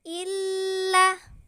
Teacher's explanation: Cara membacanya yaitu panjangnya 2 harokat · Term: mad asli